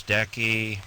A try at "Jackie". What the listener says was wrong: Jackie with the J. Not decky like pool decky.